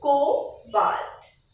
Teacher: The B is not really spoken in a stretched manner. You stretch the O